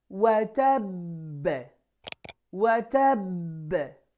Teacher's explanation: Keep it quick. Qalqalah is very short, not long like med. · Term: Major Qalqalah